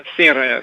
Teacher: asyir ya dibaca tipis ya, jangan ditebalkan ya.